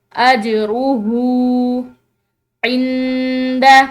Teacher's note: نون ساکن ہے اس کے بعد دال ہے تو یہاں پر نون ساکن پر اخفا ہوگا